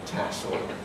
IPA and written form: ˈtæsl (tassel)